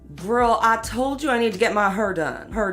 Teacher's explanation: a feature in African American English in places like St. Louis and Memphis called the near-square nurse merger, or R centralization.